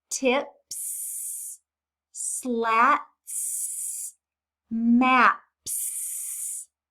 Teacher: They didn't say the voiced Z sound for S, did they?